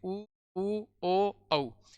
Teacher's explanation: वे स्वर जिनका उच्चारण करने पर होठों की आकृति गोल हो जाती है वो तो वृत्ताकार स्वर कहलाते हैं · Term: वर्ताकार स्वर